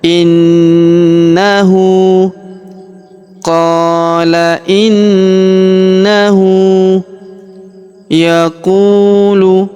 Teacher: huruf hu kita panjangkan dua harakat karena berharakat U terbalik